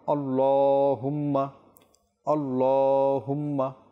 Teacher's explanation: এ পরিপূর্ণ শব্দে শুধু আল্লাহ যে লাম রয়েছে এই স্থানে আমাদেরকে একটু টানতে হবে এক আলিফ যেহেতু এখানে আল্লাহ লামের উপর খাড়া জবর রয়েছে আর খাড়া জবর